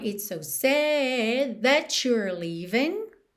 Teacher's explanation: That you're frequentemente fica com esse som chu na junção.